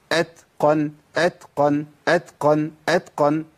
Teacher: اي تاء ساكنه امشي النفس فين؟ في المخرج مع صوت الحرف وانا بطلع الحرف. اتقن اتقن اتقن اتقن، ما اقولش اتقن، ما ينفعش.